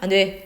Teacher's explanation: 예를 들어 mother's no 엄마의 안 돼 라는 것이 근데 uttered with sharply falling intonation